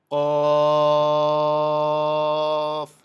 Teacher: জিহ্বার গোড়া তার বরাবর উপরে তালুতে লাগাইয়া শক্ত করে বলতে হয়